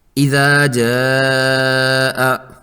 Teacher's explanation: مد متصل کو 5 حرکات لمبا کیا ہے